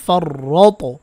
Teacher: ত কলকলা করতে হবে এবং ত কিন্তু মোটা হবে